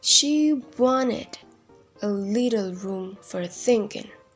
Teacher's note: unstressed followed by stress followed by unstressed unstressed again followed by stressed unstressed stressed